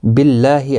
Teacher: اللہ کا لام باریک پڑھا جائے گا زیر کی وجہ سے